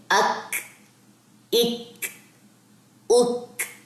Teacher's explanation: کاف کاف آیا نا اس کمبینیشن میں, تو یہ حروف محموسہ میں سے, اس میں ہمس ہے, اس میں سانس جاری ہوتی ہے